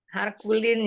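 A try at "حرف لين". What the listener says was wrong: Harfu, fa bukan ku. Harfu, huruf. Harfulin itu huruf lin.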